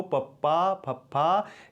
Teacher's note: इस तरीके दे नाल होठ है जिहड़े ओह मिल के वक्खो वक्ख हो जाते हैं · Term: होठी धुनियां